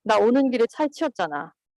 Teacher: This type of thetic 잖아 with falling intonation contour, the hearer's surprise reaction can directly follow 잖아 utterance.